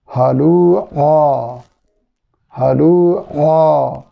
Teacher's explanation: عین کو توجہ سے ادا نہیں کریں گے تو یہ حلوعا حمزہ بن جائے گا۔